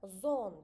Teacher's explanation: Söz ortalarında h hərfi ümumiyyətlə oxunmur.